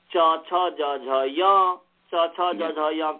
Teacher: उसके बाद चवर्ग है और स्थान में उसके बाद तालु है, इसलिए च छ ज झ य, च छ ज झ य का तालु स्थान है